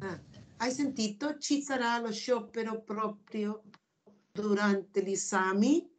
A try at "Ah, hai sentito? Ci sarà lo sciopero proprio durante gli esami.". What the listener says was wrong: Aspetta, aspetta, aspetta. Non è una domanda.